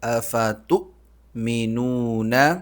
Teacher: حمزہ پر جھٹکا، یعنی آواز اور سانس دونوں بند